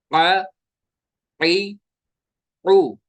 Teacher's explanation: आइन निकलता है हलक के दरमियान वाले हिस्से से